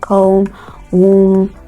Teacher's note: these words have the final B sounds silent so they are not pronounced you have words like com wom